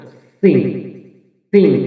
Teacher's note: জিহ্বার আগা সামনে নিচে দুই দাঁতের গোড়া